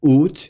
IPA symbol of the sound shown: u: